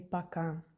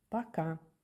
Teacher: O, not stressed, is A.